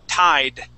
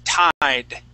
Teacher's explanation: We need a D sound. So pull your tongue back, okay? And let it hit the top of your mouth, just like a Spanish R.